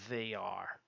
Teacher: O TH tem um som que você bota a ponta da língua entre os dentes e parece uma vibração de Z assim. Não é som de D, não.